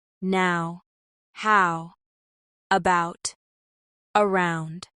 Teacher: For more fluency, let's focus on the Ow vowel in words like now, how, about, and around. In American English, this vowel starts with an open mouth and glides toward a more closed position.